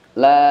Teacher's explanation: tahan m-nya sampai ketukan sukun sempurna